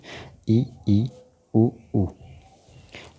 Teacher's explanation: संवृत स्वरों के उच्चारण में मुख अपेक्षा कम खुलता है तथा जिह्वा मुख में ऊपर की ओर स्थित रहती है